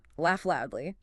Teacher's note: You don't say them twice, you just hold the L sound slightly longer.